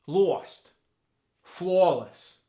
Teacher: mouth like stop and orange turn to stop orange like that the a sound get stretched out further to the bottom part of the mouth and it gets like a w in front of it